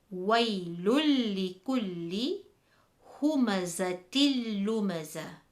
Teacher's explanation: Join the word with the Noon Saakin or Tanween and the idgham letter. So we read it as waylul likulli humazatil lumaza, remembering the fact of not to do a ghunnah. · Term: idgham without ghunnah